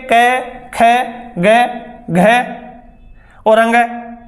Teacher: स्पर्शी व्यंजन यानी ऐसे व्यंजन जिनके उच्चारण में दो उच्चारण अवयव एक दूसरे को स्पर्श करते हैं